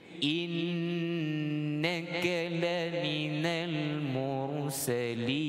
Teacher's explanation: Dengung pada nun syaddah. Kita panggil nun musyaddadah, nun tasydid.